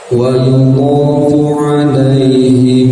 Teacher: mim mati bertemu huruf ba maka ikhfa syafawi ini harus ditahan. Sama ketentuan menahannya ukurannya dengan gunnah, dengan ikhfa, dengan idgham gunnahnya yaitu dua harokat.